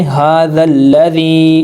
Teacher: ھذا الذی، ہا کے اوپر کھڑا زبر ہے، 2 حرکات کے برابر لمبا ہوگا، زال کو لام سے ملائیں گے، جمع سختی کریں گے، یہ جو دونوں الف ہیں ان دونوں کو نہیں پڑھا جائے گا، یہ سائلنٹ ہیں۔ ھذا الذی، یا ساکن سے پہلے زیر ہے تو یا حروف مدہ ہے، زیر کو 2 حرکات کے برابر کھینچا